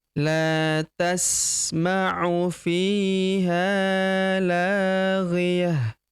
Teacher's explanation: Huruf la kita panjangkan dua harakat karena terdapat tanda alif di depannya